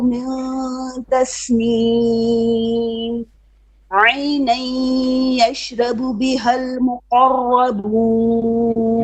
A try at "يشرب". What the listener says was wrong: Make your ra more heavy here. يشرب.